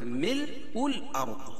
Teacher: را ساکنہ سے پہلے زبر ہے تو را کو پور پڑھیں گے اور ضاد پور پڑھیں گے